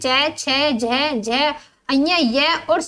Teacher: तालु से बोले जाने वाले इन वर्णों को तालव्य कहा जाता है